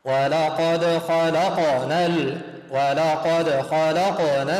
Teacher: ولقد، جاء الدا ساكن أقلقله. ولقد خلق، جاء حرف القاف ساكن أقلقله، اجعل الحرف يضطرب في مخرجه يتحرك